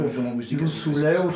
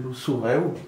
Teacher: Moi, je viens d'un coin du sud de la Drôme où on transforme les L en R par rapport au provençal. Oh, ça, donc, par exemple, Loussoulet, c'est Loussouret.